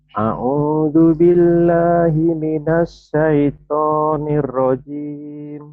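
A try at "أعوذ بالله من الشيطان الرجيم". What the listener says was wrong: Bagus tapi sinnya gede ya. A'udzu billahi alif dan ain. A'udzu billahi minasyaitonir rajim.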